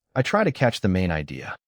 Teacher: The useful stress falls on main idea because that is the goal, not every individual word. Hear the sentence as one thought and say it naturally.